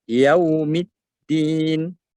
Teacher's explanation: Yau, waw mati, bibir monyong.